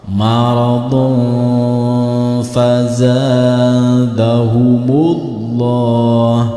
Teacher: Karena tidak boleh berhenti di sini, berarti dhammah tain bertemu dengan huruf fa, maka ini dinamakan bacaan ikhfa. Cara membaca bacaan ikhfa yaitu harus disamarkan. Dhammah tain disamarkan ke dalam huruf fa.